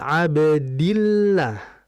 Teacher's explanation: jika dal tersebut mengandung kasrah, maka teksturnya akan menjadi encer